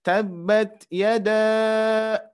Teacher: Terus jangan lupa ketika ada tanda alis harus dipanjangkan ya. Tabbat yada ya, dengan memanjangkan bisa dengan tiga ketukan